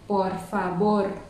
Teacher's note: trong tiếng Tây Ban Nha sẽ không phân biệt B, V mà sẽ cùng đọc như nhau là B